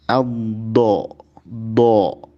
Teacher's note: Dari sisi makhraj, huruf dod dari sisi lidah, baik sisi kiri ataupun sisi kanan yang menyentuh atau mengenai gigi geraham atas.